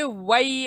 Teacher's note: होठों को गोल करते हुए वई अदा करेंगे वई